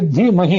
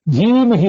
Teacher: ಧಿ ಅಂತ ಹ್ರಸ್ವ ಇದೆ. ಆ ಹ್ರಸ್ವ ಇದ್ದದನ್ನು ದೀರ್ಘ ಮಾಡ್ಕೊಂಡ್ಬಿಟ್ರೆ ಧೀಮಹಿ ಅಂತ ಆಗ್ತದೆ.